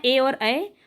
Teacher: कंठ और तालू से मिलकर के कौन सा बना है ए और ऐ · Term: कंठ तालव्य